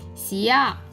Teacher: The initial is 西 and its final is 呀 and is a falling tone